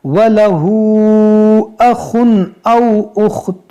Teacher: تنوین کے بعد حمزہ ہے تو یہاں پر ہم اظہار کریں گے